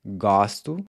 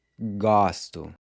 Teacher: we see how the pronunciation of the O changes from a closed to open in the I form as well